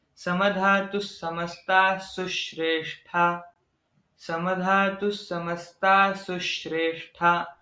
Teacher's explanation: ये सु अक्षर है उस पे हमें थोड़ा सा जोर देके उच्चार उसका करना चाहिए